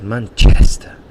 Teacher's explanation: laughs at my pronunciation for Manchester because he says Manchester and he really exaggerates the chest and that's where the stress is in that word